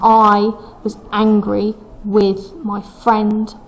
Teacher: the first line is trochaic trimeter. That means that the emphasis comes on the first syllable of the foot, not on the second.